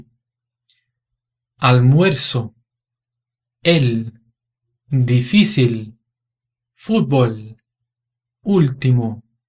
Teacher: para produzir esse som do ele aqui a nossa língua tem que encostar no céu da boca